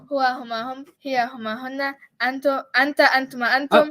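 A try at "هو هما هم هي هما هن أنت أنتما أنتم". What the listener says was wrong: Flawless victory.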